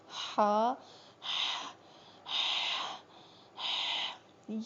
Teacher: اور جو ہا ہے یہ وسطی حلق سے نکلے گا، یعنی حلق کے بیچ والے حصے سے ادا ہوگا